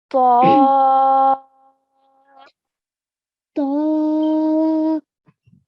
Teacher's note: but at least four seconds we have to give this so we have to stretch the sound of ba for four counts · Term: madulkabir